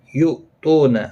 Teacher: حمزہ ساکن کو جھٹکی کے ساتھ ادا کیا جائے گا۔ تو واو مدہ ہے، ایک الف کی مقدار کے برابر کھینچ کر پڑھیں گے۔